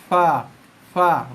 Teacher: gigi kacak atas kena bibir bawah. Keluarnya bunyi berserta dengan angin